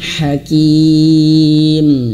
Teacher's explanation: Haknya tipis, betul-betul halus.